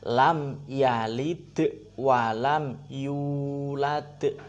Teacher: Lam seharusnya tidak bersenandung, bukan lam yalid.